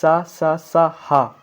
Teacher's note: उष्म ऊष्म या आपने विज्ञान में पढ़ा होगा ऊष्म ऊष्म यानी गर्म तो मैं आपको बताऊं ऊष्मा ऊष्म अगर जब आप सहा आप जब आप बोलेंगे तो आपके शरीर से गर्म हवा आएगी तो उसको ऊष्म व्यंजन कहते हैं